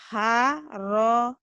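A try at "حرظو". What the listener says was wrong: Harozo. Zo. Jangan so. Zo.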